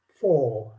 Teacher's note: what happened to the r it goes silent and you keep the o longer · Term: long o